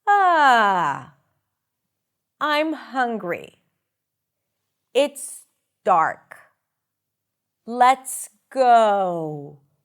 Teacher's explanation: Uh so we start low and we go up and there is falling intonation usually associated with statement where we start and then we drop down